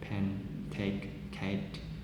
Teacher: P, T, K are aspirated briefly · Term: voiceless plosive